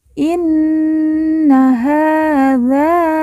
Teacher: ha kita baca panjang dua harakat karena di atasnya terdapat Alif kecil